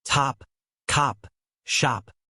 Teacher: The O in words like hot and lot. In British English, this O is more rounded and open. It's almost like saying ah but shorter.